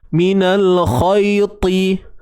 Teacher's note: Huruf ta, bila kita sebut ta tu, pangkal lidah kita rasa dia naik. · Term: Isti'la